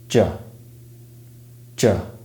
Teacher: the voiced palatoalveolar affricate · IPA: /dʒ/